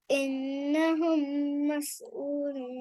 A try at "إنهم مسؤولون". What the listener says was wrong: No, stretch here properly. Meme, sakin, if the next letter is meme or ba. So we stretch, okay?